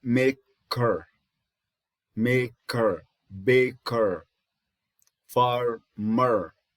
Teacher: So it's a mid, central, rounded, lax vowel.